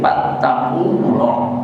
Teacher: lam mujalalahnya menjadi tafhim, jangan fattakullah tapi fattakullah, tafhim artinya tebal